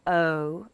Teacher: in standard British English we have the movement across the vowels oh but in a glass region it's straighter like this oh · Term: diphthong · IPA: /əʊ/